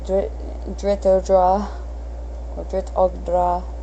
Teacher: It's OG technically, but I don't think they pronounce the G.